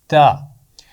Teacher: very good, اس کا مخرج ہے زبان کی نوک اور اوپر والے سامنے کے دانتوں کے پیچھے لگا کر تا کی آواز ادا ہوتی ہے